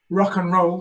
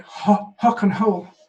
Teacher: speakers often change the initial r into an h